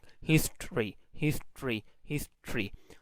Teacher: the second syllable is starting from R itself. So now R is no more syllabic. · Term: non-syllabic R